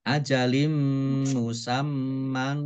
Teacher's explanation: kasroh tanwin bertemu dengan huruf mim, bacaan idgham bi gunnah. Ya, dibaca mendengung. Idgham bi gunnah, idgham masuk, bi dengan gunnah mendengung.